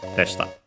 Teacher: de sta, high, low, low